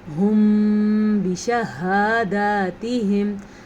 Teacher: اخفاء شفوی کا قاعدہ ایسے ہوتا ہے جب میم ساکن کے بعد حرف با آ جائے تو وہاں پہ ہونٹ بند ہو جاتے ہیں، غننے کی کیفیت طاری ہو جاتی ہے۔